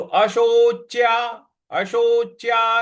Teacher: उसके आगे जो च है उस पर हमको बल लगाना है